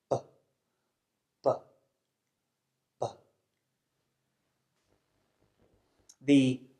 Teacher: And this means that we use both of our lips to block our mouths. The B sound is made through the mouth and it's voiced which means that we use our vocal cords to make the sound. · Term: voiced bilabial stop